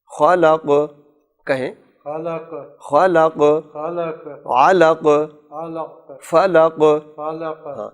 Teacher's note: یہ جو قاف ہے اس پر شد کا شائبہ نہ آئے. خلق نہیں، خلق خلق کہیں.